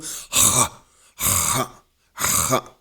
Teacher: o som da garganta rasgada